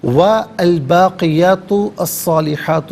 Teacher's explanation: والباقیات الصالحات، واو پر زبر، اس سے الباقیات کی لام ساکن کے ساتھ ملائیں گے، باقیات میں تا پر پیش ہے، اس سے صاد کے ساتھ ملائیں گے، درمیان میں سے الف یعنی حمزہ کو حذف کیا جائے گا۔ صاد بھی حرف شمسیہ، یہاں پر لام کی آواز نہیں بلکہ صاد کی آواز ادا کی جائے گی۔ با یا صاد ح، ان سب پر کھڑا زبر ہے، کھڑا زبر کے ساتھ بھی اور الف مدہ کے ساتھ بھی پڑھ سکتے ہیں۔